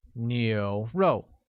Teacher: with a mid-rising tone on U, a falling tone on O, making it 牛肉.